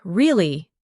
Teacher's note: Your voice goes up slightly at the end.